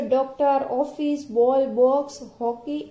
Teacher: विवृत आ का उच्चारण आ और ओ स्वरों के बीच का होता है